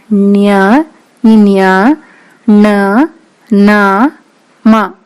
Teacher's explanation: ಮೂರನೆಯದು ಅನುನಾಸಿಕ ಅಕ್ಷರಗಳು. ಅನುನಾಸಿಕ ಅಕ್ಷರಗಳು ಅಂದರೆ ಮೂಗಿನ ಸಹಾಯದಿಂದ ಉಚ್ಚರಿಸುವಂತಹ ಅಕ್ಷರಗಳು. ಒಟ್ಟು ಇವು 5 ಅಕ್ಷರಗಳಿವೆ.